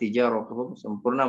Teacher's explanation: Sama rabihat tijaratuhum sempurna maksudnya tak yang pertama dimasukkan ke tak yang kedua. Nah, tak sukun yang pertama dimasukkan dengan tak yang kedua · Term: idgham mislain